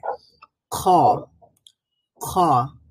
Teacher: নরম যে প্যালাটটা রয়েছে সেখানে এক ধরনের ভাইব্রেশন তৈরি হবে খ উচ্চারণ করার সময়